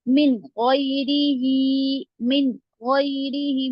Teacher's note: मिन गैरिही नहीं खींचेंगे, मिन जल्दी पढ़ेंगे